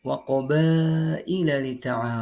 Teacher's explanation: terdapat hukum bacaan mad wajib muttasil cara membacanya yakni wajib memanjangkan wajib memanjangkan 4 sampai dengan 5 ketukan